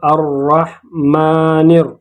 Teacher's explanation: پھر اس کے بعد یہاں پر الف اور لام آیا ہے، اور اس کے بعد حروف شمسیہ میں سے را آیا ہے، تو ہم اس کو پڑھیں گے اور را کو پڑھیں گے، لام کو ظاہر نہیں کریں گے بلکہ ہم پڑھیں گے الرحمن پھر اس کے بعد را پر زبر ہے، اس کو موٹا پڑھیں گے۔ پھر میم ہے اور میم پر کڑا زبر ہے، اس کو 2 حرکات کھینچیں گے۔